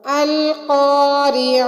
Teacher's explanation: القاریعہ میں قاف موٹا ادا ہوگا اور عین حلق کے بیچ سے ادا ہوگی